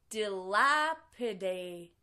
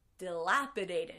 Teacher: in the last syllable Ted becomes a D sound because it's between two vowels